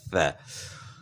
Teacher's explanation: اچھا، ثا کا جو ہے نا ہمیں اندازہ ہو گیا کہ ثا کو کس طرح ادا کرنا ہے، یعنی زبان کی نوک ثنایا علیا کے اندرونی کناروں کے ساتھ لگانی ہے اور نیچے دانتوں کے ساتھ زبان ٹچ نہیں کرنی،